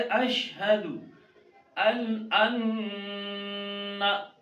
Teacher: नून मुशद्दद है, इसमें गुन्ना करें